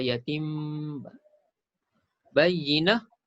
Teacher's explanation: Iklab, tukar bunyi nun kepada bunyi mim. Disertai dengung.